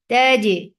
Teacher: When you are aparting the makhraj of jim, that brings in qalqala